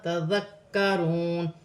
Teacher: یہاں پر الف مدہ ہے، اسے ایک الف کی مقدار کھینچ کر پڑھا جائے گا. تذکرون، ذال نرمی والا حرف ہے، ذال کو کاف کے ساتھ ملا کر پڑھا جائے گا. کاف باریک ہے اور مشدد ہے، جماؤں کے ساتھ 2 مرتبہ پڑھا جائے گا.